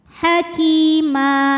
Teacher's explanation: karena ada Ya Sukun didahului baris kasrah maka dipanjangkan kafnya dua harakat